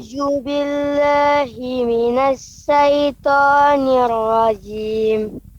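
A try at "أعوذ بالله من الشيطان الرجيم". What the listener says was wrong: Shin juga ya. Huruf shin. Minasyaiton. Sya. Bukan huruf sa. Ya, bukan huruf sa. Tapi sya. A'udzu billahi minasyaitonir rajim.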